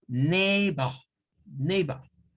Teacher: La mayoría de británicos tienden, digamos, mejor dicho, a no sonar cuando la R está al final de las palabras acompañada de una vocal, ellos no suenan la R. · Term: UK pronunciation